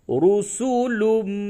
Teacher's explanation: تنوین کے بعد حروف یرملون میں سے میم آیا ہے، اس جگہ پہ ادغام مع الغنہ ہوگا